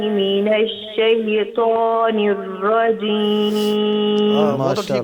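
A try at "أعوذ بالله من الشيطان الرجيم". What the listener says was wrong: आखरी वाला जो है वो जो है ना उसको थोड़ा सा सही करें निरा वाला बाकी ठीक है शैतानजीम अभी भी पुर नहीं हुआ सही तरह पुर करें इसको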